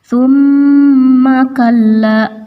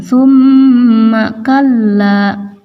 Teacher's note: thumma mim bertasydid dinamakan gunnah, maka harus ada dengung. Tahan dulu dan didengungkan.